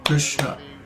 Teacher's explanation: the word Krishna is only 2 padas long, because each of the vowels in Krishna is a short pada, a short syllable.